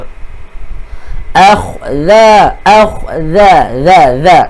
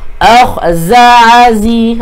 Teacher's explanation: Keluarkan hujung lidah di antara gigi, gigi gunting. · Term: huruf zal